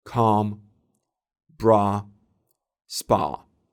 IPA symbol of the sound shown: ɑ